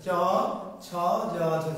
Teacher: জিহ্বাটা উঠে গিয়ে কি জিহ্বার মাঝের অংশটা তালুর সাথে স্পর্শ করছে